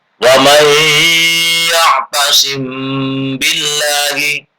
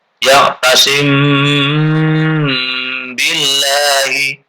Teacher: Bacaan ikhfa syafawi yaitu apabila mim mati bertemu dengan ba, maka cara membacanya harus dibunyikan samar-samar di bibir dan didengungkan